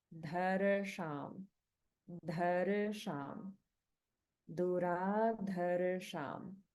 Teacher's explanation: there's a slight sort of roll of the R sound. We don't hold on the Ir sound. It gets rolled a little bit. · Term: Svara Bhakti